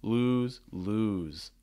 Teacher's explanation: lose in terms of pronunciation notice has your boo sounds ooh small round lips the back of your tongue is high the front of your tongue is down